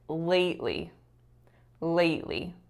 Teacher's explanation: I should have stressed the first and not the second